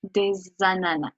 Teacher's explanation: you actually pronounce the S, which sounds like a Z. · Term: liaison